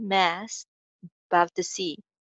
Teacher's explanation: mass ka ending sound s, above mein link kiya jayega